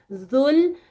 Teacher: زبان اوپر اور نیچے کے دانتوں کے درمیان میں بس آئے گی، لگے گی کہیں نہیں